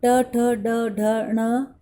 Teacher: मूर्धा और जीभ से इनका उच्चारण किया जाता है, इसीलिए इनको मूर्धन्य कहा जाता है।